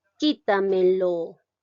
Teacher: En la sílaba ki. Ya aquí lleva la mayor fuerza de voz.